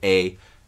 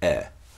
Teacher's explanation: the contrast between the two front mid vowels high mid a and mid air